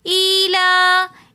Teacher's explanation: لام کے اوپر کھڑا زبر آ رہا ہے تو اس لیے ہم نے ایلا ایک الف کی مقدار کھینچ کر پڑھا